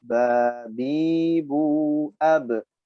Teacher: Ab dan bunyi mantul itu harus kuat dan cepat. Di qalqalah tidak boleh diperlambat kecuali ba-nya itu bertasydid.